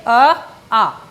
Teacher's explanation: कहाँ आवाज आ रही है, जीभ कहीं टच ही नहीं करी, बोल के देखिए आ, जीभ कहीं टच नहीं कर रही है, हवा निकल रही है गले से।